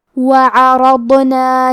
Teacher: کلمت عرضنا میں حرف الراء کو اور حرف الضاد کو دونوں کو تفخیم سے مطلب بھاری آواز میں پڑھیں گے